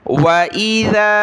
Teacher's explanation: ज़ाल पर ज़बान निकालनी, नरमी के साथ पढ़ना है और मद की वजह से हमने इसको खींचना है।